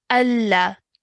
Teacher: good stretch for three counts at least